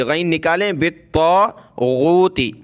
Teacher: فمن یکفر بالطاغوت، با کو تا کے ساتھ ملائیں گے اور تا کو اور غین کو ہم نے موٹا کرنا ہے، تا پر یہ تشدید ہے تو تا کو سخت کریں گے۔ با طا زیر بالطا الف زبر طا بالطا، غین واو پیش غو تا زیر تی غوتی، ٹھیک ہے، بالطاغوتی، غین نکالیں، بالطاغوتی۔